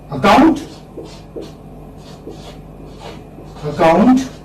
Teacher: the second syllable is stressed